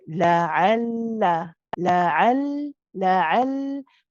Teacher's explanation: That first lam is tawassut. It's bayniya. It's the one which is not too long, not too short.